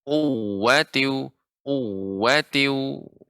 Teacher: Seharusnya bukan wa-nya dipanjangkan, tapi waw-nya yang ditekan.